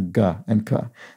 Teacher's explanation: if you pronounce the g and k you may feel the tongue against the back of your mouth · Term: velar